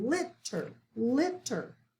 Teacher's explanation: we're going to accent that first syllable